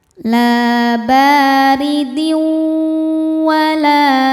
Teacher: Selanjutnya ada hukum idgham dihunah karena ada tanwin kasrah menghadapi huruf wau. Cara membacanya tanwin dileburkan ke wau disertai dengungan. · tanwin dileburkan ke waw disertai dengungan